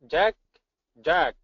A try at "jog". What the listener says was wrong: a little bit more drop of the jaw for jog